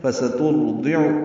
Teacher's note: فسترضع را ضاد دونوں پر ہیں. فسترضع تا باریک ہے، عین وسط حلق سے ادا ہوگا